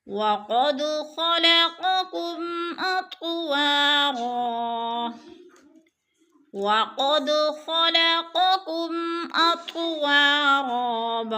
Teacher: وَقَدْ قاف پر پڑھا جائے گا، اور دال ساکن ہے، تھوڑا سا ہلا کر پڑھیں گے۔